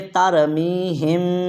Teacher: یہ باریک ہا نہیں ہے، یہ موٹا ہا ہے، تو کیسے پڑھیں گے؟